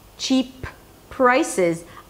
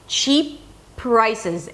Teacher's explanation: I just stopped my breath, cheap prices, and connected it to the next P.